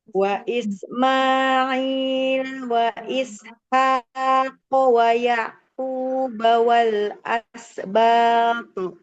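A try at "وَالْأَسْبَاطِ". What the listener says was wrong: Wal huruf sinnya jangan ada e-nya ya. Wal asbat.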